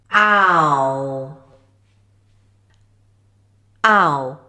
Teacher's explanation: /ʌ/, now keep it short, then glide to /ʊ/, by moving the tongue upward and backward, closing the jaw to a fairly closed position, and the lips move from open to a more rounded shape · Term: /aʊ/ sound